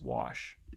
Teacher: so it's a low back vowel